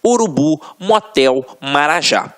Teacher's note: oxítonas a última sílaba é a tônica então exemplos urubu Motel Marajá reparem que na hora